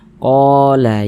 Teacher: Jadi kalau ada alif sebelumnya ada harokat fathah, maka huruf yang memiliki harokat fathah dibaca panjang. Qa dibaca panjang, mad tabi'i panjang 2 harokat. Qala ya dibaca panjang.